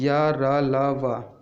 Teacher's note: ये या जो है तालव्य, रा जो है मूर्धन्य से बोला जाता है, ला वो है दंत से, और वा जो है दंत प्लस ओठ से बोला जाता है। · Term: अर्ध स्वर